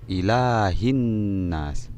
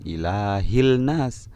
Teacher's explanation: yaumid diin lemnya dilebur kemudian ilaihim Nas Hai Di sini ada huruf alif lam bertemu dengan Nun maka lemnya dilebur maka dibaca ilahinas bukan inilah ilnas tapi dibaca hilah in Nas